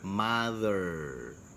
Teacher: apalagi kalau misalnya R-nya yang ada di belakang, contohnya mother, jadi nggak terlalu mencucu